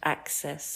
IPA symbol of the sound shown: a